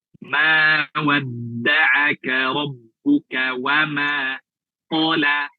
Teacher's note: Ro-nya dibaca tebal. Ro mufakhomah. Ro yang dibaca tebal. Karena dia berharokat fathah.